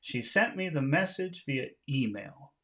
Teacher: we'll make the important sounds High tones except for the last one because it's the end of a phrase we'll make that low